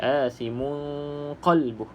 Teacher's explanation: Okey, cuma dekat sini dengungnya dengan cara ikhfa lah, kita sembunyikan ataupun samarkan bunyi nun tersebut